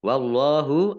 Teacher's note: Allahnya dibaca tebal karena harokat di depannya fathah. Lam fathah berdiri, mat tabi'i, panjang 2 harokat.